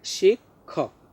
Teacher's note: শিক্ষক উচ্চারণ হচ্ছে শিক্ষক, প্রথমে ক এরপরে খ